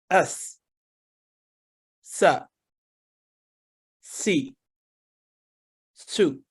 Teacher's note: اس حرف کی ادائیگی کرتے وقت زبان تالو کی طرف بلند نہیں ہوتی اور ہلکی سیٹی کی سی آواز نکلتی ہے